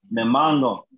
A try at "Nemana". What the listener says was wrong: Ahí suena como G. Tiene que oírse como que se le cayó la nariz. Pero sin decir una G.